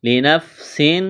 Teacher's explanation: لنفس تنوین کے بعد حروف حلقی میں سے حمزہ ہے، یہاں پر اظہار کریں گے، آواز ناک میں نہیں چھپائیں گے، غنہ نہیں کریں گے